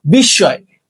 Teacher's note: শব্দের মাঝখানে মফলা থাকলে আবার মফলার উচ্চারণ হয় না